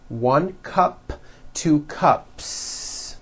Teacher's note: there's no voicing at the end of that word the S remains unvoiced